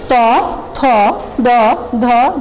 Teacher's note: আমাদের জিহ্বার অগ্রভাগ দাঁতকে স্পর্শ করার ফলে উচ্চারিত হয় এই পাঁচটি বর্ণ, যার কারণে এদেরকে বলা হচ্ছে দন্তমূলীয়।